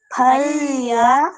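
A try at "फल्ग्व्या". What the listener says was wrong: కాదు, లా కింద గావత్తు వావత్తు యావత్తు ఫల్గ్వ్యా ఫల్గ్వ్యా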